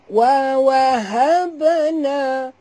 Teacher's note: ba bila dia mati kena lantunkan dia qalqalah sughra